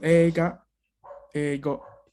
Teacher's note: No es como una I pronunciada por completo, es una I un poco a mitad. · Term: I corta